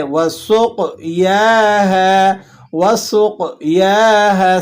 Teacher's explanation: سین باریک اور قوف کو آپ نے موٹا ادا کرنا ہے. یا پر کھڑا زبر ہے اور ہا کو آپ نے ایک الف تک کھینچ لینا ہے کیونکہ اس کے بعد الف ہے.